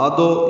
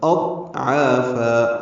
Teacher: ضاد ساکن ہے، اس پہ اظہار ہوگا، یعنی قلقلہ نہ ہو، ادو یہ کہنا غلط ہے، ادو غلط، اضعافا۔